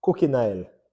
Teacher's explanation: and so that OI sound changes to AI